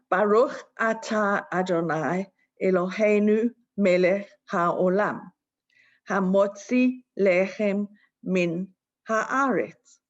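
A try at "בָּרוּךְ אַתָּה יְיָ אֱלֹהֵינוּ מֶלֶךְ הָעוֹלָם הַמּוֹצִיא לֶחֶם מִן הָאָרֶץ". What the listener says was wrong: Yes, thank you.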